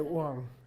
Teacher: the b sound changes to a w sound